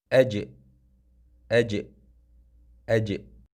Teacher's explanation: Ia berlaku apabila pertengahan daun lidah diangkat menekan ke langit-langit keras. Kemudian tekanan udara keluar daripadanya. Maka di situ terjadilah bunyi huruf qalqalah bagi jim.